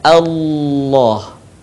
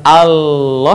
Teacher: melafalkan huruf lam pada love zuljalal ah atau lafal Allah maka huruf lam harus terdengar suaranya menebal dengan cara menutup kan bagian lisan ke langit-langit